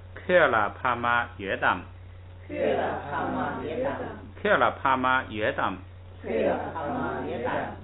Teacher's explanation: 这个约一提正好二声，是一个问话的语气。